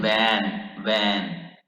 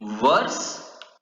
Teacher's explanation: V is labiodental. You will have to touch your lower lip to upper part of your teeth. Lower lip with upper teeth, and you will say like in van.